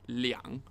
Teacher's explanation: Liang, third tone, meaning 2.